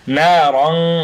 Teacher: نون ألف زبر نا، را ألف দুই জবর রং, না রং, না রন না বলে না রং কেন বলছি, কারণ তারপরেই আমরা দেখতে পাচ্ছি তা এসেছে, তা একফার হরফ, এই জন্য তানউইনের পরে একফার হরফ আসলেই আমরা সেটা গুন্নাহ করব, নাকের ভিতর থেকে গুন্নাহ উচ্চারিত হবে।